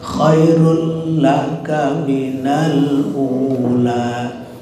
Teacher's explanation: Maka ini berarti idgham bila gunnah ya, tidak ada gunnahnya. Jadi khairul kan gak ada gunanya.